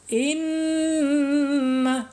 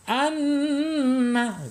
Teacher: hukum huruf nun ketika ada tasjid berarti masuk ke gunnah, dibaca dengung dan ditahan 2-3 harokat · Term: gunnah dengung